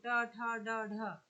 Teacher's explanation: उच्चारण स्थान के आधार पर मूर्धन्य व्यंजन